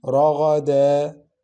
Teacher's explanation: We learned substitute lengthening, where we have tanween al-fatha above the last letter of the stoppage word. We pronounce the first vowel only with lengthening, but we don't pronounce the second vowel for tanween.